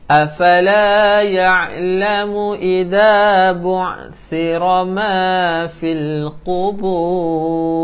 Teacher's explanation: hujung lidah kita berada di gigi kapak atas dan bawah